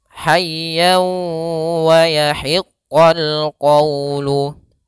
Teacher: Tanwinnya masuk kepada huruf waw sehingga bukan lagi dibaca han ya, hayyan wa yahiqqa, tapi masuk hayya wa sambil ditahan 2 harokat suara wawnya. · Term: idgham bi gunnah